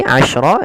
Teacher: Tafasyi itu intisarus saut fil fam, yaitu menyebarnya suara di mulut banyak. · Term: sifat tafasyi